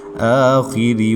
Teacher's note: را کے نیچے زیر ہے تو اس کو باریک پڑھیں گے